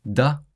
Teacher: Final t sounds are often dropped in Flemish